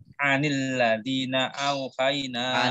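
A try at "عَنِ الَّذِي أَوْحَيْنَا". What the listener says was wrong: Anil ladhi, tidak pakai na. Tidak pakai na. Aladinya tidak pakai na.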